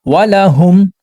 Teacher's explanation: یہاں پر میم ساکن کی آواز کو ظاہر کریں گے اور جلدی پڑھیں گے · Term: اظہار شفوی